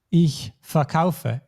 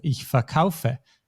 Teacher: It's not ich kaufe ver, but ich verkaufe. And in this case, the stress is not on the syllable, but on the kaufe, on the second syllable